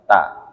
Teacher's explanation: ujung lidah ditaruh di belakang gigi seri atas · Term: huruf ta